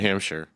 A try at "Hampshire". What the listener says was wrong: No, not Shire. It's only like if you say we're going out to the Shire, then you can say that. Otherwise, it's Hampshire.